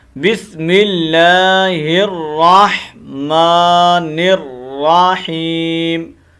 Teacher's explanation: نون کو پھر را کے ساتھ کنیکٹ کرنا ہے، را کو علیحدہ پڑھنے کے بعد ہا کی جو حرکت ہے اس کو ہم نے واضح کرتے ہوئے تھوڑا لمبا کرنا ہے، کیونکہ یہ یا مدہ ہے۔